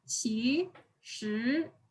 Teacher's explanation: So our voice starts low and then rises, and then starts low again and rises again. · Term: second tones